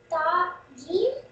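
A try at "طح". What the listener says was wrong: It's not jim. Jim has one dot in center, but this one is empty. Ta ha.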